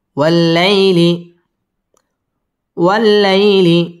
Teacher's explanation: ওয়াল্লাই জবরের বাম পাশে জজম ওয়ালা ইয়া লিনের হরফ তাড়াতাড়ি পড়তে হবে।